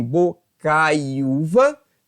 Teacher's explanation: Que na verdade, se for para parar e pensar foneticamente, nós teríamos em bocaiúva, nós teremos o ditongo decrescente AI, com esse I prolongando para o U, nós teríamos o ditongo crescente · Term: glide